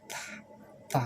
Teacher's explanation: ta itu tipis, lidah, gigi, lidah nekan sedikit, ta, sehingga keluar angin sedikit